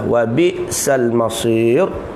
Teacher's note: jangan tekan wabi, ya, sebab hamzah mati tu